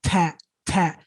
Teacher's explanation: The ta has what we call, it has something we call, one of the characteristics that it has that these other 2 letters don't have is called hams, airflow. As in, when we say the ta, some air comes out of your mouth.